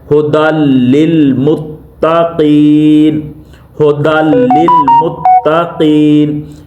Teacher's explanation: इसको इसके साथ जम कर रहे हैं, दाल को लाम के साथ, मगर गुन्ना नहीं कर रहे।